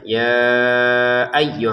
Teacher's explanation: Ya ayyuhalladzina amanu, ya-nya kita baca 5 harokat ya. Ya ayyuh, untuk ya-nya yang kedua ini kita tekan. · Yanya kita baca lima harakat ya.